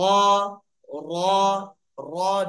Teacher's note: জিহ্বার আগা একটু কাঁপবে